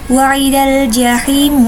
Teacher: alif lam bertemu dengan salah satu huruf qamariyah yaitu jim maka dinamakan alif lam qamariyah, dan biasanya alif lamnya dibaca dengan jelas